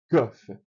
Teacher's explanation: O kaf, ele é pronunciado mais para trás como se fosse o que de queijo